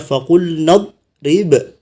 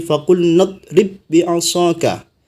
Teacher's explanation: ketika wakaf dipantulkan ba-nya. Tapi ketika disambung, maka ba-nya tidak memantul lagi